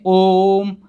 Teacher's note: ओम बोलने में हमको थोड़ा सा ज़्यादा समय लगता है, यानी 3 मात्रा का समय लगता है, उसको हम लोग कहते हैं प्लुत स्वर।